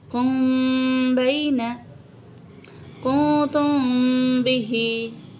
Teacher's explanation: बिल्कुल हल्का सा गुन्ना सा होगा